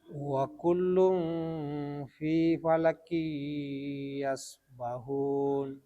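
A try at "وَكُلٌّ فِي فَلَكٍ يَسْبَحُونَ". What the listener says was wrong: Tadi huruf la-nya kurang tebal. Jadi bukan wa kullun. Ya, yang benar wa kullun.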